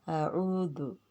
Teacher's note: حلق سے عین، دال نرمی سے ادا کریں گے